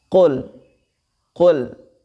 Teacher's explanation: Mengapa dia huruf qaf itu memantul? Karena huruf qaf termasuk salah satu huruf qalqalah, maka dia memantul